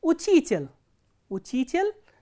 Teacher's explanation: there are 3 vowels, out of which the middle one is stressed, the ending is unstressed